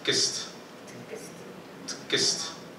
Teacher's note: with the second syllable, there was schwa vowel insertion · in the first syllable, it's an obstruent that forms a syllable peak. But with the second syllable, like when you see it, like high amplitude and formal structure and voice bar and periodic wave, they are the indication of vocalic element.